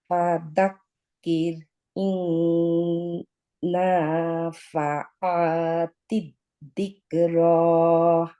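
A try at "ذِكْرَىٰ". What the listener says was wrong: Very prominent দা উচ্চারণ হয়ে যাচ্ছে। দিক্র দিক্র। হ্যাঁ, জিভটা একটু বের করে আনেন তাহলে হবে। দায়ের উচ্চারণটা ঠিক করতে হবে।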